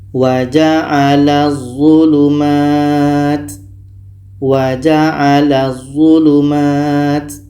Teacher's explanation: Bunyi La ini terus masuk ke d dan di sini tidak boleh dengung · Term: idgham Syamsiyah, idgham syamsiyah